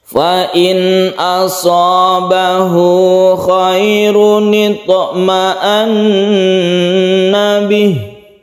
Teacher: Nun mati bertemu dengan hamzah kita sebut dengan idhar. Idhar itu jelas dan tidak dengung.